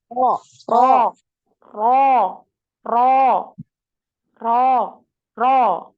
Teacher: Ro. Nah, jangan lupa dinaikkan pangkal lidahnya ketika Ro, tebal